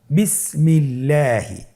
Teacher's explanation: আল্লাহ শব্দের দ্বিতীয় লামের আগে এখানে জের এসেছে, আপনারা জের দেখতে পাচ্ছেন। এই জন্যে আল্লাহ শব্দের দ্বিতীয় লামটিকে বারিক করে পাতলা করে পড়তে হবে। আপনি যদি বলেন বিসমিল্লাহি, তাহলে এই পড়াটি বিশুদ্ধ হবে না, আপনাকে পড়তে হবে শুদ্ধ করে।